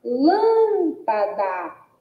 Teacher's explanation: a sílaba lã é a sílaba pronunciada com mais ênfase. Então, é a sílaba tônica.